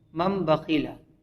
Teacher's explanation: تنوین اور نون ساکن کے بعد با ہے تو نون ساکن کو میم ساکن سے بدلیں گے